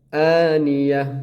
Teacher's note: یہ تا جو ہے یہ ہا بن جائے گا جب وقف کریں گے